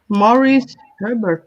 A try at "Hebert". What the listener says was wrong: Or Hebert. Hebert. No R there. Hebert.